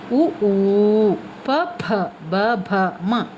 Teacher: ಅಕ್ಷರಗಳು ತುಟಿಯ ಓಷ್ಟ ಸಹಾಯದಿಂದ ಹುಟ್ಟುವಾದ್ದರಿಂದ ಅದನ್ನು ಓಸ್ಟ್ಯ ವರ್ಣಗಳೆಂದು ಕರೆಯುವರು